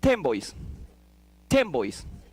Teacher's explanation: It's closed because now you don't pronounce N, you pronounce M. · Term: assimilation